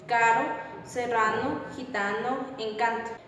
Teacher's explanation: requiere una abertura de los labios mayores A diferencia de las demás vocales la lengua debe estar suavemente extendida en el hueco de la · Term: a media